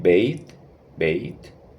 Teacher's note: la diferencia es que no es TH de sonido mudo, sino que sí se pronuncia